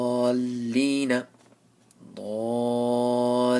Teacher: hold on to the lam but not so much that you end up putting a ghunna